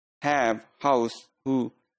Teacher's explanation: glottal sounds are produced between the vocal cords and ha typical sound in words like have house who could